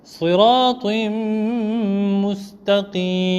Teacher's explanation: Après un tanwin, sous le ta, siratim, il y a un tanwin. Après le tanwin, il y a la lettre mim. Là aussi, on fera le idgham en faisant le ghunna.